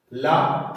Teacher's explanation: ला को बोलने में मुख से निकलने वाली वायु जीभ के पार्श्व अर्थात बगल से निकलती है, इसीलिए ला को पार्श्विक व्यंजन कहा जाता है।